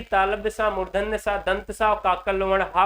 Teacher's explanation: तालव्य सा, मूर्धन्य सा, दंत सा और काकल वर्ण हा को संघर्षी व्यंजन कहा जाता है।